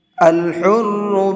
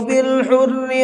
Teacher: الحر کے اندر را کو پر کریں گے، بالحر کے اندر را کو باریک پڑھیں گے